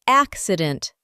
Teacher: he pronounces the word the way anyone from Central Arizona pronounces the word, with primary stress on the first syllable. Accident. 3 syllables.